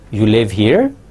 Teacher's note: you can make it a question by asking it in rising tone